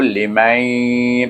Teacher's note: Bila bunyinya mai, iaitu dia adalah idgham ma'al gunnah kerana nun sukun bertemu dengan ya.